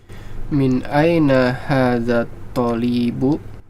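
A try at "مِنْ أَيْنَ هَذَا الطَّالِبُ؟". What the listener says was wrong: Talibu. To-nya yang panjang.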